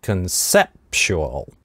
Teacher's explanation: sep краткий слог, /ɛ/ краткое, а потом /p/ идет, стоп, поэтому усиливающая гортанная смычка. Conseptual то есть как, помните, как в русском я рассказывал, что есть вот этот восходящий тон, с гортанной смычкой.